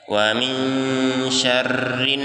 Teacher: huruf nun bertasdid, ditahan dan ditekan dua harokat.